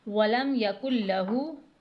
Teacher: اس ہا کو حلق کی جانب سے ادا کرنا ہے